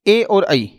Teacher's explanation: ए और आई इन दोनों का जो उच्चारण स्थल है वो कंठ प्लस तालु से होता है। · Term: कंठ तालु